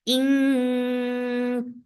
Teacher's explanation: This ikhfa is light, so keep your tongue straight.